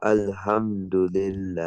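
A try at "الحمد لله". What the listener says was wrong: on, make the ha sharper.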